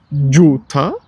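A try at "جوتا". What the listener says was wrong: Joota. Not tha, ta. Joota. Ta. Ta.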